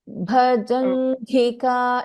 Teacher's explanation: Ja is Alpa Prana. The next letter Gha is Mahaprana.